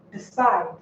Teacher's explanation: Side is the last syllable, therefore you stress it.